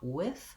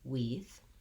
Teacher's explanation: Watch out for not making it more like a tense E. You want with, not weeth. · Then we have our vowel I, which is the lax I vowel. Watch out for not making it more like a tense E.